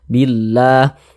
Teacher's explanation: lafaz Allah kita panjangkan dua harakat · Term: Mad thi'i